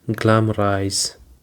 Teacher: It is actually have three syllables and the stress is on the first syllable